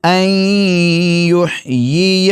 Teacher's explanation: الحا کو حلق کے درمیانی حصے سے اور یا کے نیچے زیر پڑھیں گے اور دوسری یا پر زبر پڑھیں گے۔